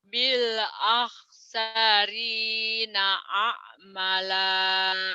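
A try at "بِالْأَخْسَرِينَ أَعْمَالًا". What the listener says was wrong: Panjang. A'mala. Bil akhsarina a'mala.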